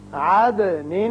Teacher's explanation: یہاں دال کی صفت قلقلہ ادا ہوگی